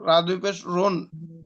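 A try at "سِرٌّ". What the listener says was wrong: বলছেন, রা। Record video দেখেন, রা বলছেন। সির, রা না ভাই, র।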